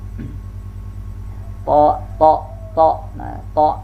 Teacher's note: ta ini juga sifatnya al-isti'la, dia dengan mengangkat pangkal lidah di saat kita melafalkan huruf ta.